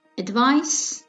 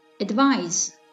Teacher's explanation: The difference is in the final consonant s and z.